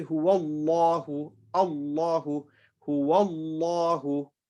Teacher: have to look at the word the letter before that so the letter before allah if he's got a dhamma the word allah is pronounced with the full mouth